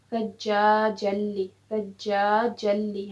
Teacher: اب ہم نے جلی نہیں پڑھا، ہم نے پڑھا ثجاجلی، ثجاجلی، ہم نے نون کی آواز کو ختم کر دیا اس میں سے، کیونکہ یہاں پہ ادغام ناقص کا قاعدہ لگا